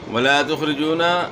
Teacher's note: خا کو آپ نے موٹا پڑھنا ہے، را کے نیچے زیر ہے، زیر کو آپ نے را کو آپ نے باریک پڑھنا ہے، یعنی موٹا نہیں کرنا